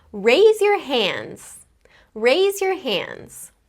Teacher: I actually did not pronounce the D or the D sound in the word hands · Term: consonant clusters